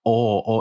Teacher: it's like oh oh it's like way back there like you your tongue is so far back in your mouth